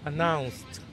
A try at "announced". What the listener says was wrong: That's exactly it.